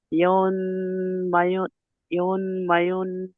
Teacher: নুন নুন সাকিনের পরে হরফের ইকফার 15টি অক্ষরের মধ্যে একটি অক্ষর ফা এসেছে, তাই নুন সাকিনের আওয়াজকে নাকে তুলে এক আলিফ পরিমাণ গুণনা করে পড়তে হবে